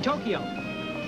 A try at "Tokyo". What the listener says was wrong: Two syllables. Tokyo.